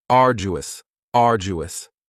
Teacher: you don't hear that D sound that much. It's not very strong. It almost sounds a little like a J.